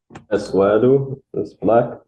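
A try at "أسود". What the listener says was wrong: But try not to stretch the vowel, right? It's not aswadu, but aswadu.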